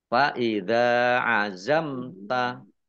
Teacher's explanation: mim sukun bertemu dengan huruf ta izhar syafawi dibaca jelas